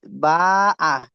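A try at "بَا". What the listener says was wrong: না এখানটা আলিফ পড়া হবে না, বা তানমিনে আলিফ পড়া হয় না।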